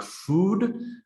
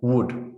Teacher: the difference in length between something like food and wood which has short vowel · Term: long and short vowels